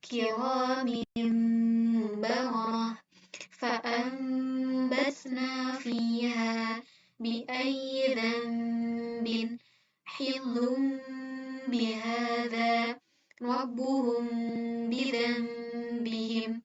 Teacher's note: Jadi ketika kita melafalkan nun mati atau tanwin yang bertemu dengan huruf ba, maka huruf nunnya tersebut dialihkan menjadi huruf mim. Nah, dalam pelafalan iqlab ini, bibir kita tidak sepenuhnya merapat, akan tetapi ada terbuka sedikit, sangat tipis. Kalau dikira-kira tuh setipis kertasnya.